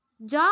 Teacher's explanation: तालु से जा वर्ण बोला जाता है। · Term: तालव्य